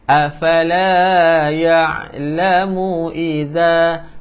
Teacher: pastikan hujung lidah duduk di antara gigi kapak ataupun gigi gunting depan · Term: huruf zal